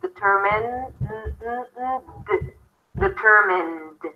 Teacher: I can feel my vocal chords vibrating as I'm pronouncing the end